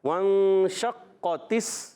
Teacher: नून को छुपा कर एक अलिफ का गुन्ना अदा करेंगे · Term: इख्फा कायदा